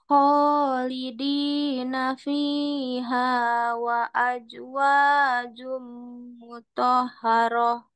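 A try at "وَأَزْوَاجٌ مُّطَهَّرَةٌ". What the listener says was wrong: Bukan wa aj tapi wa az. wa aj ya, wa azwajum mutahharah.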